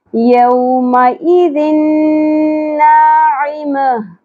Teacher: ادغام مع الغنہ ہوگا، ہم نے ملانا بھی ہے اور غنہ بھی کرنا ہے